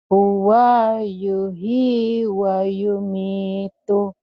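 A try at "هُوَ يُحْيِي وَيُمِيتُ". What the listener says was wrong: Huwa yuhyi bukan yuhi. Huwa yuh. Nah kalau ketemu huruf mati kayak disambar, kayak koma di atas. Huwa yuhyi wa yumitu.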